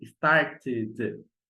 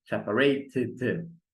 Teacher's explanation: quando o verbo termina com T ou D, aí a pronúncia fica com ID e ganha uma sílaba extra.